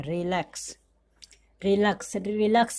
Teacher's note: एक्स का जो उच्चारण है वो आधा क और स के रूप में आ रहा है इस वर्ड में। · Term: अक्स का उच्चारण